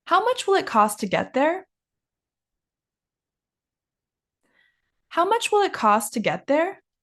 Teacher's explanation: our next sentence is a question. So, we're going to go up at the end.